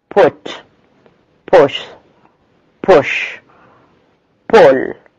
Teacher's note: U is the short, back, close, rounded as in put, foot.